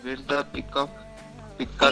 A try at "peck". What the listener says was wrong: Again pick. Again pick. Where's the pick?